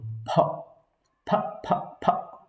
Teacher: পিও না এবং পও না এবং ফও না, দুইটার মাঝামাঝি, প এবং ফ এর মাঝামাঝি দুই ঠোঁট মিলিয়ে বাতাস বের হবে,